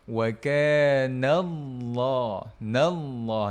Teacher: Nak tebalkan angkat pangkal lidah.